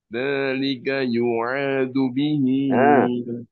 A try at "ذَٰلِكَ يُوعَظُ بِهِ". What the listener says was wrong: Hanya tidak panjang. Yu'adzu bihi. Yu'adzu bihi. Baik.